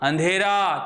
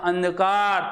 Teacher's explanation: आप बोलते तो अंधेरा तो ध्वनि नाक के साथ साथ मुख से भी निकल रही है, लेकिन जैसे आप बोलते अंधकार तो ध्वनि केवल नाक से निकल रही है। तो यहाँ पे उच्चारण करते समय ध्वनि केवल नाक से निकल रही है।